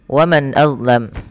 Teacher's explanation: nun mati bertemu alif, bertemu dengan hamzah, suara nunnya jelas, dibaca dengan izhar. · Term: izhar halqi